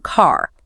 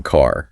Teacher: American English, which is usually rhotic, pronouncing that R sound